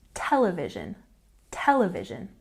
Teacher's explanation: television has a stress on the first syllable television television and the next one where does the stress go